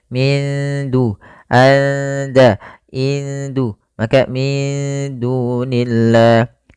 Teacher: Kemudian pada lafal da, di sini nunnya disamarkan ke da, kita namakan dengan bacaan ikhfa.